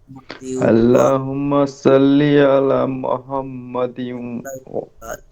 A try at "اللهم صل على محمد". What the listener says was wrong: اللهم صل على محمد. হা হবে আমরা লম্বা হা পড়ছি না, জিমের পরে হা। মুহাম্মদ, আল্লাহুম্মা সাল্লি আলা মুহাম্মদ